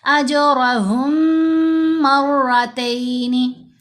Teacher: हा को गुना करते हुए मुशद्द मीम से मिलाएंगे · یہ میم ساکن کا ادغام ہم نے کیا ہے. یہ ساکن میم کو مشدد میم کے اندر ہی مرج کر دیا ہے. یہ بیسیکلی مدغم کرنا ادغام ہے، ساتھ ہم نے غنہ بھی کیا. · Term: इदगाम शफवी